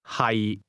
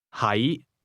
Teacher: to be is pronounced with a low, level tone, and to be located is pronounced with a mid-rising tone.